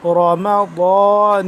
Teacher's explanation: ضاد کو آپ نے ادا کرنا ہے زبان کی بائیں کروٹ کو اوپر والے داڑھوں کے ساتھ جب ٹچ کریں گے نا تو تب ضاد ادا ہوگا